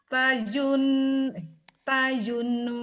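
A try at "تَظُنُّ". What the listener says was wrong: jangan tajun, Bu. Tajun. Emang itu zai. Zo tauzun zo tauzun agak zo tauzun tapi bukan di ujung mulut ya, bukan di ujung gigi.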